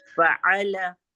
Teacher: ल में जबान का किनारा ऊपर के तालू से लगा